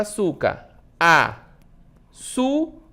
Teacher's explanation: A sílaba tônica é o su, né? Su, que é a mais forte.